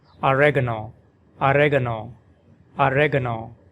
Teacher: with the stress on the second syllable reg, oregano. And in British English, oregano, oregano, with the stress on the third syllable ga, oregano, oregano.